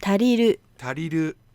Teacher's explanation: a little bit more up on that ru